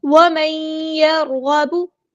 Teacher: را ساکن ہے تو یہ را پور پڑا جائے گا · نون ساکن کے بعد یا آیا ہے تو یہاں پہ ادغام مع الغنہ ہوگا